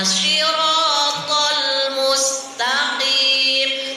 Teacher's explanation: lam itu bukan huruf qalqalah. Jadi tahan dulu baru langsung masuk ke huruf yang selanjutnya.